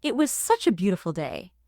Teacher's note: Emphasis on the main adjective beautiful.